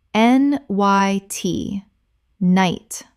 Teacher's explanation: The k n makes only an n sound and the g h is completely silent. One syllable only Example The knight in the painting is depicted in full armor with an expression of absolute determination on his face.